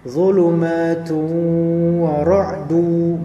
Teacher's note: tanwin bertemu dengan waw. Zulumatu didughamkan kepada waw.